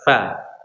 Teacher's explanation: Dalam matanya fal fa ma'a atrafi ats-tsanaya al-musyrifah. Huruf fa itu ujung gigi seri atas bertemu dengan perut bibir bawah.